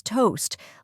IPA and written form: toʊst (Toast)